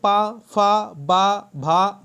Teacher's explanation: पा वर्ग का उच्चारण स्थान ओष्ठ है।